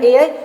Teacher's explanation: ए कंठ एवं तालु से यानी कि कंठ तालव्य